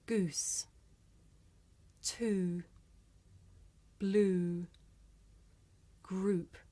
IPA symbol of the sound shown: u: